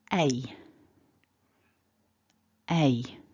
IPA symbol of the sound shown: eɪ